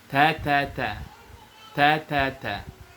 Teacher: ujung lidah ke pangkal gigi seri atas. Kemudian dia harus dibaca hams. Ada anginnya.